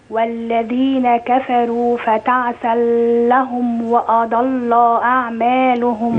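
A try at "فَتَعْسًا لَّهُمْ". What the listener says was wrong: مركنش عند اللام. واحدة واحدة. فتعسى لهم.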